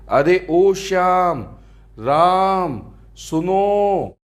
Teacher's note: इनके उच्चारण में दीर्घ स्वर से भी अधिक समय लगता है। इन्हें त्रिमात्रिक स्वर भी कहते हैं। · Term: प्लुत स्वर